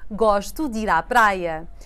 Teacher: The D and the E blend and it sounds like a new word, dir.